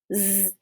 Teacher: voiced, meaning that your vocal cords are vibrating. So say z and touch your throat.